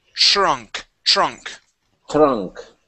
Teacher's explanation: with the TR sound we want to replace the T with a CH okay so we want to say TR TR trunk trunk trunk